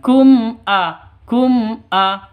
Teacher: langsung mim matinya jelas hamzahnya juga jelas Kenapa karena zharhar Safawi bacanya jelas tidak boleh dengung